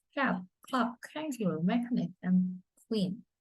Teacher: back part of the tongue against the soft palate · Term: velars